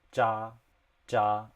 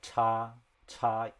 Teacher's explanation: But then for ch or like cha, cha, it's a bit breathier. So you have to put a bit more air into it.